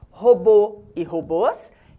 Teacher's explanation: Algo semelhante se dá com oxítonas terminadas em O, seguido ou não de S. Robô e robôs recebem o acento circunflexo para marcar o timbre fechado da vogal